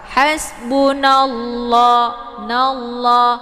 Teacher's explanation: Hasbunallah, nallah di sini ada lafadz jalalah ya, yaitu lafadz Allah. Ini dibacanya tafkhim ya, jadi tebal karena sebelum lafadz Allah berharokat fathah